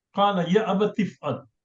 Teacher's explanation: That alif becomes silence and we just join with ya qala abati f'al. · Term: Hamzatul Wasl